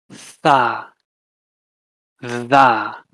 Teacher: Then dentolabial, lips and teeth, fa, va. Then dental, tip of your tongue with your teeth